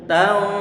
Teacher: Sehingga kalau dha itu tebal, sedangkan proses untuk pengucapan bacaan ikhfa itu adalah kita pertama-tama menahan suara dengungan sambil berusaha persiapan untuk mengucapkan huruf yang datang setelahnya. Huruf yang datang setelahnya berupa huruf dha, maka nanti ikhfa dan gunnah di sana terdengar tebal.